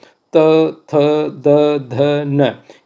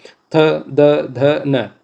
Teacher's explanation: तो त जीभ आपकी कहां टकरा रही है? दांत से टकरा रही है।